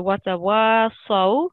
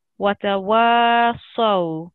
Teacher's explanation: this wa, because of the alif, is going to be prolonged for 2 seconds